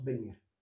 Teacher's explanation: La V se pronuncia B en este caso.